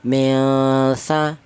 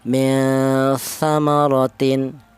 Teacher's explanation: Kalau yang ini ikhfa, artinya ikhfa itu samar. Jadi nun matinya ini dibaca samar. Milsa, jangan min sa, jangan.